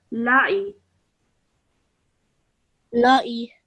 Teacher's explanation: Lam has a simple fatha. Ain has a simple kasra. So 1 second each, okay?